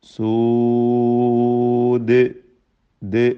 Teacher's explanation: സൂദ് ദാലിൽ വഖഫ് ചെയ്യുമ്പോൾ ഖൽഖല കുബ്ര നൽകി വഖഫ് ചെയ്യണം, ദീർഘം നൽകാവുന്നതാണ്.